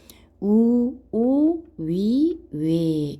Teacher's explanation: 입술을 둥글게 모아서 내는 소리를 원순